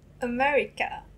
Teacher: i think all the r just goes like l